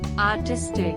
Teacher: 3 syllables, and the emphasis on second syllable